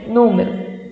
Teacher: a proparoxítona, ela vai ter a sílaba tônica na antepenúltima